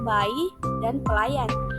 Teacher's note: Proses pembunyian huruf Y ini yaitu bunyi semivokal laminopalatal bersuara